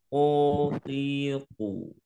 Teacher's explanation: Ko itu tidak keluar udara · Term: huruf qaf